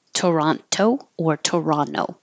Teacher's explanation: So a lot of Americans will drop the second T.